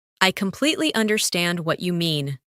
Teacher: Emphasize completely and understand.